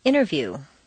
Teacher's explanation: the T can simply disappear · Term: the silent T